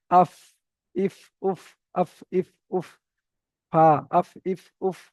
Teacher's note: নিচের ঠোঁটের ভিজে অংশ, এই যে আমাদের নিচের ঠোঁট রয়েছে, এই নিচের ঠোঁটের ভিজে অংশ রয়েছে যেটা মানে ভিতরের দিকে ভিজে অংশ, সামনের উপরের দুই দাঁতের আগার সাথে লাগিয়ে, সামনের উপরের দুটো দাঁত নিচের ঠোঁটের ভিজে অংশে লাগবে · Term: ফা এর মাখরাজ